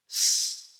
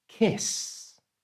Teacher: So back to our example, kiss, the ending is the s sound, and you make that totally with your breath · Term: voiceless sound